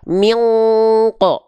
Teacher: kalau huruf qof dengungan engnya tebal